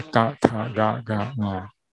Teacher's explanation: 把这些辅音嘎的音发生在我们的喉结